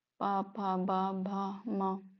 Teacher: और पूरा पावर्ग ही ओष्ठ से है। पावर्ग, पा फा बा भा मा, माँ जो है अनुनासिक में चला जाएगा।